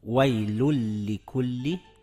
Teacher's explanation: Yaʼni vaylun soʻzining oxiri lam domma va nun bilan tugayapti. Demak, sukunliy nunimiz idg'om harflariga yo'liqqani uchun sukunli nunni talaffuz qilmaymiz va undan keyingi idg'om harfini ikki harakatga cho'zib talaffuz qilamiz